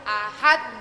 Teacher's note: Pantulannya harus kuat karena huruf dal yang terakhir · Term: kubro